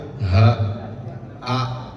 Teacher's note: Kalau hamzah dengan ha, dia ada di pangkal tenggorokan, paling jauh.